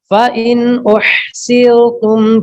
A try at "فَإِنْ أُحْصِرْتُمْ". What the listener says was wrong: فَإِنْ أُحْصِرْ، صاد تھا، صاد کو موٹا کیجیے.